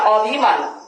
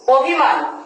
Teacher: এই আদ্য অ এর উচ্চারণটি ও এর মতন হবে